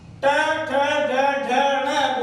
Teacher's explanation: ट वर्ग का उच्चारण स्थान जो है मित्रों वो है मूर्धा। आपने पढ़ा होगा ऋतु रसाणाम मूर्धा, ऋतु रसाणाम मूर्धा आपने पढ़ा होगा।